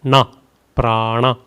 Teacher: The n is with the dot below. So rolling your tongue up retroflex.